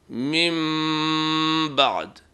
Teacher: نون کی آواز میم میں تبدیل ہو جائے گی اور غنہ بھی کیا جائے گا